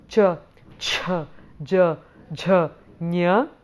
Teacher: we have the palatals or the thalavias which are cha cha